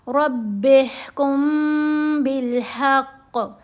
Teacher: میم ساکن کے بعد با ہے اس لیے میم کے اوپر یہاں بھی غنہ ہوگا. میم ساکن کا احفا.